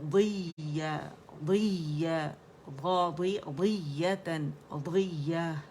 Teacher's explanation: یہ یا مشدد پہ نبر ہے، وصلاً وقفاً اس کو ہم ہمیشہ پڑھیں گے، نبر کریں گے